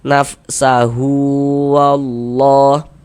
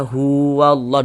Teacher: Nah, ini kalau misalkan kita tidak berhenti di huruf H, kita wasolkan nafsahu wallah. Nah, berlaku tanda panjangnya huwallah, dibaca dengan dua harokat. Tapi kalau misalkan kita berhenti di huruf H, kita baca nafsah, gugurlah tanda panjangnya, seperti itu.